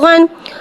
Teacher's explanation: गैन को एक अलिफ यानी तीन हरकत के बराबर खींच के पढ़ेंगे। गैन हुर्फ़े मुस्तआलिया है, लिहाजा इसकी आवाज़ हलक से मोटी अदा होगी। गैन के नीचे दो ज़ेर है, दो ज़ेर को नीचे गिराते हुए अदा करके पढ़ेंगे।